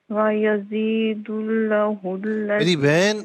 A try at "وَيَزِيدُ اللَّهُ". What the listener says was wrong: میری بہن لفظ اللہ کی جو لام ہے اسے کھینچ کر پڑھنا ہے.